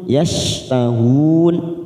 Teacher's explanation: yashtahun mat arid disukun 4 harokat kita panjangkan